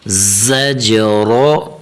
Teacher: یہاں ذال نہیں پڑھنا نرم نہیں کرنا بلکہ سختی کے ساتھ ادا کرنا ہے